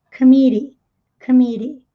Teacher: na pronúncia a sílaba tônica é o mi, é a sílaba do meio.